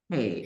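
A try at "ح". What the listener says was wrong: ஹே அல்ல. இது சின்ன விஷயம் என்னண்டா நல்லா கேட்டுக்கணும். எங்களோட தொண்டையில இந்த பாட்டுல சவுண்ட் வரணும்.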